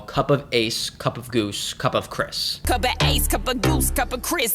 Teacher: to describe natural English cadence and one of them is called anapest meter which consists of two unstressed syllables followed by a stress one